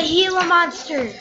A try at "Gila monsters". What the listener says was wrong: Gila. The G is an H.